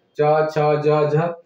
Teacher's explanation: च है तालव्य से उच्चारण होला